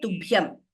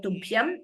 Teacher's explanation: Tubhyam is Mahaprana everywhere. Bha is Mahaprana.